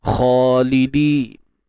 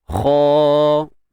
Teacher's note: Untuk huruf kha tuan-tuan kita akan baca dengan tebal kat sini dan mad asli 2 harakat